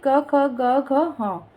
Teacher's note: कंठ ध्वनियों से तात्पर्य गले से है। क वर्ग का उच्चारण गले से होता है, इसलिए इसे कंठ ध्वनियां कहा जाता है